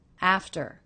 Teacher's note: The second syllable, very low in pitch, flat and quick.